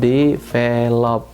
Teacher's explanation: Ternyata kalau kita lihat tekanan katanya itu berada pada kata kedua